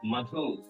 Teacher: मधु, ऊ आ गया है, इसलिए म पे बलाघात लगाएंगे।